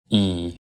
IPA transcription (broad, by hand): i